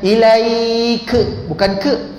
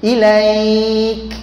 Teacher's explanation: Bila berhenti pada ilaik, kaf tu ada hamas, bukan lantunan. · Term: Angin hamas